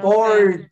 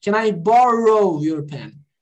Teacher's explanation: Aquele, esse, guys, esse aqui é o R retroflexo. O que é o R retroflexo? É o R do paulista.